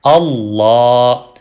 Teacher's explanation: لفظ اللہ کا لام ہمیشہ موٹا پڑھا جاتا ہے فل ہیوی ساؤنڈ میں